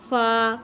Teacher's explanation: فا ہونٹوں کے تر حصے سے ادا کیا